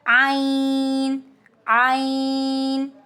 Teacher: عین درمیانی حلق سے نکلتا ہے، آواز نرم ہے اس کی، اور یہ لائٹ لیٹر ہے.